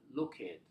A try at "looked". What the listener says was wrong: Is this one or two syllables? So only one syllable here.